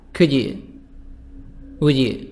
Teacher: and then we'll make a link between the d and the y